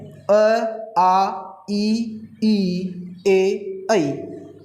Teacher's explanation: जब हम इन स्वरों का उच्चारण करते हैं अ, आ, ई, ए, ऐ, तो मुख हैं या हमारे जो होठ हैं वह वृत्ताकार रूप में न खुल करके अन्य आकार में खुलते हैं। इसीलिए इन स्वरों को अवृत्ताकार स्वर कहते हैं।